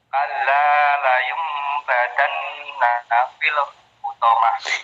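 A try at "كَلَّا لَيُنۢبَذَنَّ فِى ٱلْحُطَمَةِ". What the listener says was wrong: Jangan badan ujung lidah keluarin. Kalla la yumbazanna fil hutamah.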